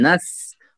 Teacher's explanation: आइन को जो है हलक से साफ कीजिए अच्छी तरह से। हाँ, यहाँ आइन फिर आ गया, नस्तईन नहीं, सीधे आइन, आइन, ठीक है।